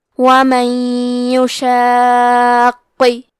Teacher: ہم نون ساکن کو یا میں ملا کے غنہ اور تشدید کے ساتھ یہ حکم کو ادا کریں گے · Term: ادغام